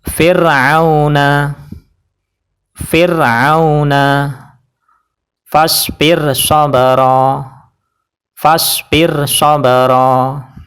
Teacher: Jadi ra-nya dibaca tarqiq atau tipis, yaitu cukup pakai lidah saja dan bibir tidak terangkat.